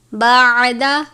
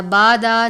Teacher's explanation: عین کو باریک پڑھنا ہے، الف کی طرح سادہ نہیں پڑھنا، بادا نہیں پڑھنا، بلکہ بعد باریک ادا کریں گے۔